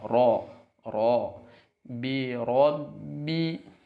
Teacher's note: Di sini kasrohnya perhatikan, jangan sampai b tapi bi. Kemudian ro di sini karena dia berharokat fathah maka terucap dengan tafkhim atau tebal